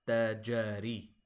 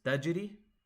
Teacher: Now jim fatha is 1 count, whereas jim sukun is a bounce.